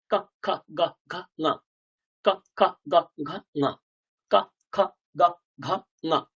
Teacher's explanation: যেখান থেকে উচ্চারিত হচ্ছে এই বর্ণগুলো, সেটাকে বলা হয় কণ্ঠ।